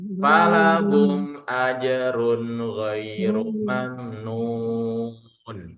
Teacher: Yang kedua juga di sini ada ajrun, dhomaten bertemu dengan ghin. Dhomaten bertemu dengan ghin juga jelas. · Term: izhar halqi